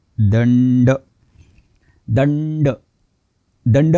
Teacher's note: दंड असा उच्चार करायचा नाही आपण मराठीत सरसकट चुकीचा उच्चार करतो दंड उच्चार करताना जीभ टाळूला लागते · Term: अनुनासिक